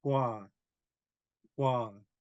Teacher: in English, when we ask a question, the tone goes up, and Haida, the tone stays low